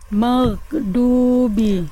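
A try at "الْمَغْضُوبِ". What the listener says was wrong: Maghdubi lebih ringan lagi Bunda. Itu Bunda terlalu kuatnya yang jangan tapi lebih dilemahkan lagi.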